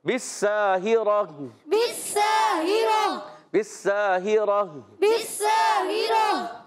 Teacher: بالساہرہ با کو سین سے ملانا ہے، سین باریک اور اس کا الف بھی باریک ہو جائے گا. اور ہا کے نیچے زیر ہے، ہا یہ حلق کے نیچے والے حصے سے.